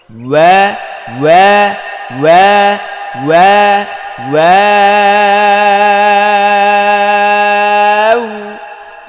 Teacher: প্রথম ঠোঁটটা গোল করতে হবে, তারপর আবার চ্যাপ্টা, তারপর গোল। হ্যাঁ, প্রথম গোল, পরে চ্যাপ্টা স্বাভাবিক, তারপর আবার গোল।